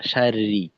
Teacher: তাজদিদের সঙ্গে এখানে যেহেতু জের আছে তো উভয় রই পাতলা। >> এমন না যে শুরুর অংশ মোটা শেষের অংশ পাতলা।